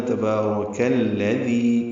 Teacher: تبارک میں تا کو جلدی ادا کرنا ہے اور نرمی سے پڑھنا ہے، با کو 2 حرکات لمبا کرنا ہے، را پر پڑھنا ہے، کاف کو الذی کے لام سے ملا دینا ہے۔